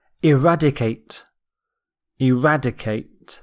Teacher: The stress is on rad.